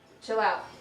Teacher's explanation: he articulates a glide, substituting wa for la in chill · he perseverates the glide to the word out as he deletes the voiceless stop t